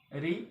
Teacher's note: री उच्चारण स्थान मूर्धा है